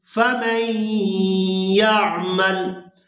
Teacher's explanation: میم کو یا مشدد کے ساتھ ملائیں گے تو غنہ کریں گے